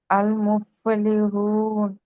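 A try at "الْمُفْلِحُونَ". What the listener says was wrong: కరెక్ట్గా చదివారు.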